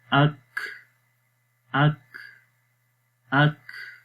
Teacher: آخر میں دیکھیں کاف کی آواز سانس یعنی کہ جاری ہو رہا ہے، یہ ہمس ہے